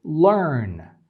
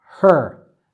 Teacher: The schwa and the r just get together and you cannot distinguish where one starts and the other ends. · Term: Are Colored Schwa